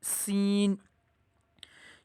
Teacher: सीन को जब हम पढ़ेंगे पहले सीटी की आवाज़ आएगी।